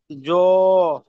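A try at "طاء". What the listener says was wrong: ত, ত, ত। ভাই জ বলছেন কেন? জ্বর মাথায় একটা নোক তারা হয়েছে, এই দেখেন এখানে তো পড়লেন তো আপনি। এই তো তোয়া খালি, আর জ্বর উপরে এক নোক্তা।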